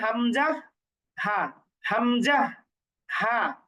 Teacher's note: গলার নিচের দিকটা হচ্ছে কণ্ঠনালীর শুরু, অর্থাৎ বুকের সাথে যে অংশটা আছে গলার, তাহলে গলার নিচের দিকটা হচ্ছে কণ্ঠনালীর শুরু। তাহলে কণ্ঠনালীর শুরু হতে হচ্ছে হামজা, এরপর হচ্ছে হা